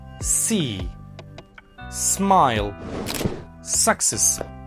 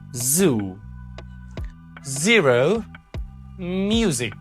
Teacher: s gives you the friction, but z z, gives you the friction and voice as well